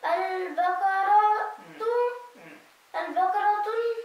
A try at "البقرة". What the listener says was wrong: no you cannot have تنوين على التنوين